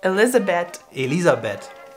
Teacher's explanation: the H is there in the name, but we don't say it.